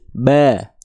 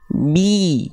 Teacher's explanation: Sekarang coba angkat tengah lidahnya. Bi. Nah, bi. Tuh, baru keluar vokal I. Bi. Kalau dia nggak naik, ba.